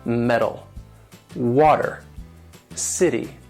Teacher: the T is in the middle which will sound more like a D sound · Now the T, and this is especially important in American English, the way Americans talk, it has that flap T sound, which is like a light D. And this is what happens when the T falls in the middle of the word.